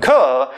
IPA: k